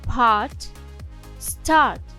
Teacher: - це склад в якому за наголошеною голосною слідує буква а голосна Ей в цьому складі читається як довгий звук а